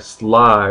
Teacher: we've got a sibilant we've got the s so we're breathing around our tongue